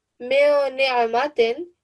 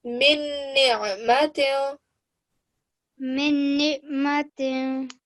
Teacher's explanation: you will eliminate the noon, yeah? You will cut the noon out. And you will only join the meme to the shadda, to the noon mushaddad